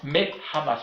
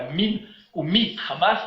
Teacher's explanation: Et donc le chirik qui est une voyelle brève va devenir une voyelle longue.